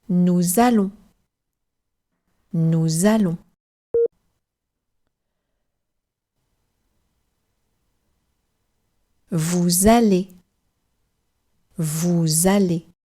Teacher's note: we do pronounce the S on the end of nous and vous, and we sort of slide into the vowel A. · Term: liaison